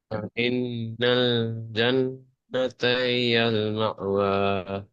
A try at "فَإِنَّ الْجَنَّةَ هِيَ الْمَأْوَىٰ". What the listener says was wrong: هي المأوى. ماء. இந்த அலிப்பு உச்சரிப்படுங்க. مأوى.